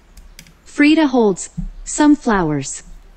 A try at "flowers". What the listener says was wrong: Flower. 또 S 소리 안 나.